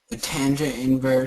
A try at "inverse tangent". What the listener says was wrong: It's actually inverse tangent. though this little -1 goes after it, the way you pronounce this is inverse tan, not tan inverse. You could also pronounce it arctan. Arctan or inverse tan, but the tan is always the second word.